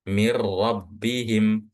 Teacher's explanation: Jadi setelah kita baca mim, mir, mir itu langsung ke huruf ro, langsung masuk ke huruf ro. Jadi bacanya seakan-akan huruf nun yang ada setelah huruf mim itu nggak pernah ada nunnya atau nunnya itu nggak dibaca. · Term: idgham bila gunnah